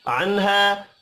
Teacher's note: نون ساکن کے بعد حروف حلقی ہا ہے اظہار حلقی ہوگا غنہ نہیں ہوگا الف مدہ کو ایک الف کے برابر کھینچ کر پڑھیں گے